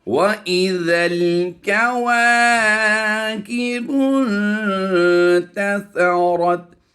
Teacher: सा की अदायगी बड़ी नरमी के साथ करेंगे और रा को पुर करते हुए ता से मिला देंगे